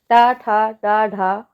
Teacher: यह कैसे बोले जाते हैं टा ठ आप बोल के देखिए आपकी जीभ तालू की तरफ ऊपर की तरफ मुड़ रही होगी तो इसी मुड़ने को ही क्या कहते हैं मुर्धा कहते हैं